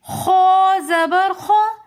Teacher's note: خو موٹے حروفوں میں سے ہے، اس لیے ہم اس کو پڑھیں گے خو زبر خو۔ خا نہیں پڑھنا، یہ رونگ طریقہ ہوگا۔